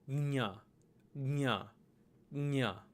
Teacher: the proper pronunciation is the palate kind of swiping outwards with a slight nasal aftertone to get gnya